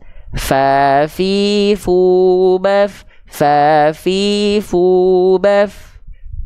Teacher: ujung gigi sari atas kita sentuhkan dengan perut bibir bawah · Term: huruf fa